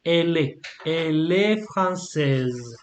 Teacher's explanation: you have to join, so the L and the E